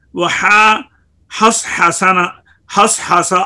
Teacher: خوب باریک کرو ہا کو حس حسا میں، کیونکہ حس حسا میں صاد پر ہے